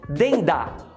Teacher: O DEM de dentro junta com o DA, ligação.